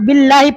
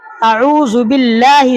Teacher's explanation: تو اللہ سے پہلے جب زیر آئے گا تو لام باریک ہوگا اللہ کا